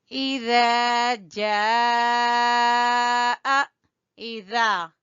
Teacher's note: اذا جاء، اذا، ای کو چھوٹا پڑھیں گے، خالی زیر ہے، ذال کو کھینچیں گے الف مدہ کی وجہ سے